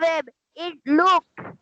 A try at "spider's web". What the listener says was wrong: stop স্পাইডার নয় যেখানে যেখানে অ্যাপোস্ট্রফি এস আছে অ্যাপোস্ট্রফি এস এ প্রনাউন্সিয়েশনটা বার করতে হবে স্পাইডারস ওয়েব বলো